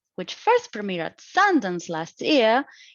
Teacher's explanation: it has a rising tone because it is a dependent clause and it's giving us incomplete information